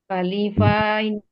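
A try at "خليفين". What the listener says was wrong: Nggak panjang Fani Bu. Khalifaini.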